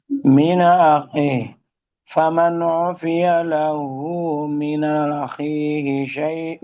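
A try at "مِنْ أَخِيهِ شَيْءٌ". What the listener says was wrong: Nanya tidak panjang Ustaz, hanya naqal saja. Min akhihi syai'. Syai'nya 6 harakat Ustaz. Syai'un. Iya, 6 harakat.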